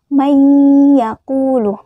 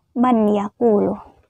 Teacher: memasukkan huruf pertama ke dalam huruf kedua dengan berdengung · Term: idgham bi gunnah